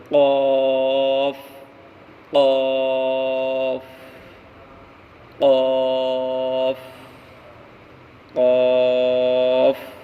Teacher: قاف کا مخرج زبان کی جڑ اور اوپر کا تالو